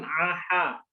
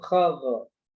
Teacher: Ya, h dengan kho. Kalau h di tengah tenggorokan, kalau kho di atas tenggorokan.